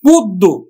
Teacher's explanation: জফলাযুক্ত যে বর্ণটা আছে ব্যঞ্জন বর্ণ, এটা কিন্তু দুইবার উচ্চারিত হবে